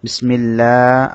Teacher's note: আল্লাহ শব্দ লামে ডানে জের হওয়ার কারণে আল্লাহ শব্দ বারিক করে পড়তে হবে